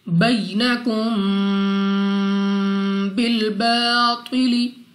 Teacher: Next ہمارے پاس یا ساکن سے پہلے زبر، یا لین بغیر کھینچے پڑھیں گے۔ میم ساکن کے بعد با، یہاں پہ بھی غنہ کر کے پڑھیں گے۔ بینکم بالباطل، الف سے پہلے زبر، الف مدہ 2 سیکنڈ تک لمبا کرنا ہے۔